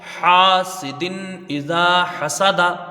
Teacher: دال کے نیچے دو زیر کی تنوین ہے، تنوین کے بعد حروف ہلکی کا حمزہ ہے، یہاں اظہار ہلکی ہوگا، تنوین کو ظاہر کر کے بغیر غنہ کے جلدی پڑھیں گے